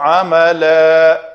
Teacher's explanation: دو زبر والی تنوین ہے، وقف کا قاعدہ ہے، الف مدہ بنا کر رکیں گے